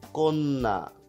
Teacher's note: কন্যার ক্ষেত্রে কি হচ্ছে? কন্যার ক্ষেত্রে ওই যে জফলা থাকার কারণে আগেরটা কিন্তু ওকার হয়ে যাচ্ছে